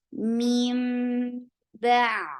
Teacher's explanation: Meme for kasra, give E sound attached with meme. Meme, this is iqlab, and give gunna nicely in your nose. Meme, ba.